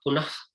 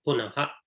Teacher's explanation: And then punaha, it is not punah. It's not half visarga, it is full visarga.